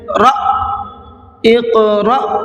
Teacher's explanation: हमज़ा साकिना के पढ़ने में झटका होता है